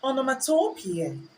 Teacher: Standard British English has a stress on peer, whereby we have the long E and we have the schwa at the end.